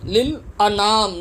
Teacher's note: نون الف زبر نا، ایک انگلی کی مقدار کھینچ کے پڑھیں گے